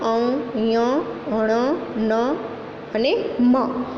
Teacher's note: એ 5 નાકમાંથી બોલતા વ્યંજનો છે. તેથી તે અનુનાસિક કહેવાય છે.